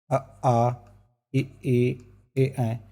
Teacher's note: इसमें हमारे होठ गोल ना खुलकर थोड़े फैल जाते हैं।